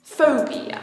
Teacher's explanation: Sounds great, but I think you probably want to say school phobia. That's a 3-syllable word with the stress on the 1st syllable.